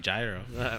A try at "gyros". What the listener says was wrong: The G is silent.